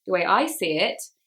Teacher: we emphasize I because it's about me